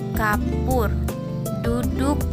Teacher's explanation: vokal yang diucapkan dengan mulut membundar dan lidah yang diangkat dalam ketinggian sepertiga bawah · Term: uh Capital